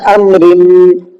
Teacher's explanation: تنوین کے بعد میں میم آ رہا ہے، اور ہم نے بھی پیچھے قاعدہ پڑھا ہے، تنوین یا نون ساکن کے بعد میں اگر میم آئے گا تو وہاں پر ادغام کا قاعدہ ہوگا، نون کی آواز کو نہیں نکالیں گے بلکہ میم پڑھا جائے گا اور غنہ ساتھ میں ہوگا